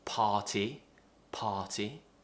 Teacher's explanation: we're not pronouncing the r